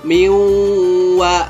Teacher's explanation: Miwa dan mendengung, karena masuknya, menyatunya, ditasdidkannya, bertasdid atau menyatukan itu sama aja. Masuknya huruf nun mati ke wa akhirnya menimbulkan suatu suara, yaitu dengungan.